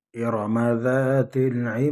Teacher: إرم ذات العماد عماد الف مدہ الف خالی اور آگے زبر ہے، ایک الف کی مقدار اس کو کھینچیں گے اور دال کو وقف کی حالت میں ساکن کریں گے اور پھر اس میں قلقلہ ہوگا